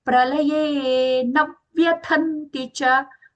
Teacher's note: Here the pralaye, lakara. It is a dental l. It is not pralaye.